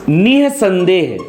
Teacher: यहां पर अगर देखा जाए तो हा, आहा का मतलब है व्यंजन जो आ रहा है स्वर के बाद, स्वर के बाद आने वाला व्यंजन, और यहां पर व्यंजन होता है ह, यहां पर व्यंजन होता है हा, और इसका उच्चारण किया जाता है कंठ से। तो यहां पर विसर्ग का उच्चारण कंठ से किया जाता है और यह भी स्वर के बाद आने वाला ह व्यंजन होता है